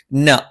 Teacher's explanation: ന നാവിന്റെ അറ്റം മേലെ മുൻപല്ലിന്റെ മോണയിലാണ്